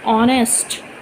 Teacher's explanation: the sound of H is not used